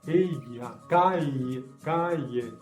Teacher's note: la lengua hace una curva y con la mitad de la lengua toca arriba en el paladar.